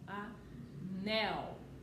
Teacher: O nel é o mais forte, é a última sílaba. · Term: oxítona